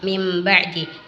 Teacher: Apabila ada nun sukun atau tanwin bertemu dengan huruf ba, maka cara membacanya adalah dengan menukar nun sukun dengan mim. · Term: Iklab